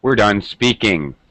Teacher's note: we use falling pitch or final falling intonation to express that we're done speaking